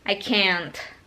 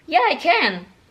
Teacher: Kalau negatif, itu intonasinya turun.